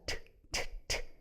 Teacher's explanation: 원래 트 사운드는 어디서 나는 소리냐면 여기 그 치경에서 나는 소리지.